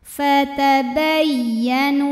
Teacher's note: Huruf ya tasydidnya jangan ditahan. Ini dibaca cukup dengan nabar. Naikkan intonasinya.